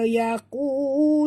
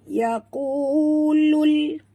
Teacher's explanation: bunyikan lam yang mati tanpa lantunan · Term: alif lam qamar